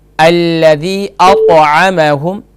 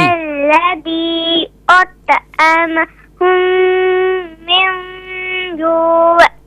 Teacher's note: أطعمهم من یہاں طا پر قلقلہ کریں گے. قلقلہ یعنی کہ اس کی آواز جو ہے ذرا لوٹتے ہوئے